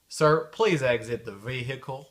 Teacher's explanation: dans certaines régions aux États-Unis il prononce le H